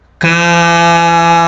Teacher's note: Dibaca panjang, 3 alif. Hukumnya adalah mad lazim mutsaqqal kilmi.